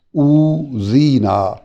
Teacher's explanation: واو مدہ پیش کو لمبا کر رہا ہے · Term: حروف مدہ